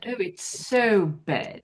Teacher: it becomes more of a short e sound than a than a a big open a sound